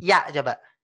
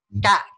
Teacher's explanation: Yang membedakan adalah kalau ya nggak nempel ke langit-langit. Kalau K nempel ke langit-langit.